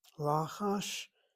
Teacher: the word for whisper, accent on the first syllable, the patak short vowel open is accented